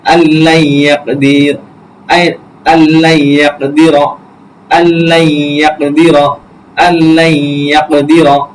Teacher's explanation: তাসদিদ ওয়ালা অক্ষর ইয়া, তার পূর্বে আমরা এখানে গুন্না করব